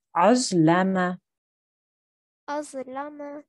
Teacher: So remember, the za is a thick sound, so we have to try and make that thick sound when we join